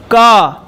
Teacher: क कंठ से आवाज आती है